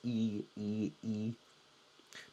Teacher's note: I've chosen the letter I, because the I in Chinese, in Pinyin, I is pronounced like our long E.